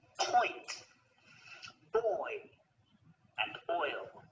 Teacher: we're going from the right all the way to the left going from rounded lips to unrounded